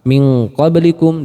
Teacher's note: ketika nun sukun bertemu dengan huruf qaf ataupun huruf kaf, maka bunyinya cenderung berbunyi ang. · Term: ikhfa ab'ad